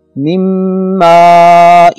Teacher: من ماء، اصل لفظ ہے من ماء، تو من نون ساکن ہے، اس پر جزم ہے، اس کے بعد ینمو میں سے تیسرا حرف میم آ رہا ہے لہذا غنہ ہوگا، اور نون کو میم میں ملا کر پڑھیں گے جسے ادغام کہا جاتا ہے